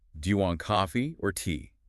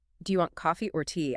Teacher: Notice how your pitch rises on coffee, signaling that this is the first option and there is more to come, and then it falls firmly on tea, signaling the end of the choices. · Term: Rise-fall intonation